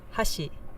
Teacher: it'll keep going up and up and up and up a little bit until it gets to like the highest pitch on the accented Mora and then right after that it gets low and it stays low pretty much for the rest of the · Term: pitch accent